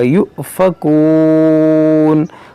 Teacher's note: یہاں پر حمزہ ساکنہ، اس میں جھٹکا ہوگا